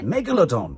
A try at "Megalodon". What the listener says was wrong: No, you've put 2 L's in. Meg. Don. Megalodon. Megalodon.